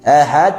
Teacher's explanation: suaranya tertahan kemudian muncul sifat Qalqalah